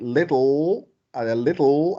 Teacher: at the end, l is syllabic